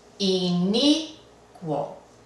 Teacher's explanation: Acaba en vocal y el acento fonético sí está en la penúltima. Inicuo no requiere el uso de la tilde.